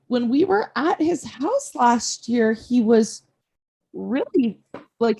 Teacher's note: she does this weird thing with her voice where she's saying her statement sounds like a question